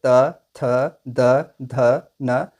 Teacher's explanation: इन सभी का उच्चारण स्थान दांत के द्वारा किया जाता है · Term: दंत्य